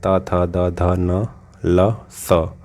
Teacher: स्थान के लिए तालिका ठीक है उच्चारित स्थान जैसे दंत त त को हम बोल नहीं सकते बिना दांत की सहायता से इसलिए इसको दंत वर्ण कहा जाता है